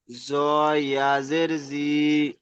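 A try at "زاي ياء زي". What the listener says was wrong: এটাকে জ বলবেন না, যা বলবেন, যা ইয়াজের জি।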